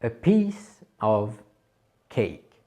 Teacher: la première syllabe est accentuée